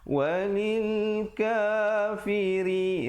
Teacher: ri di situ ra nya menjadi nipis